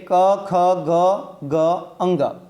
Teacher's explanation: જે વર્ણનું ઉચ્ચારણ ગળામાંથી થાય તેને આપણે કંઠ્ય વર્ણ કહીએ છીએ, જેમ કે ક, ખ, ગ, ગ, અંગ.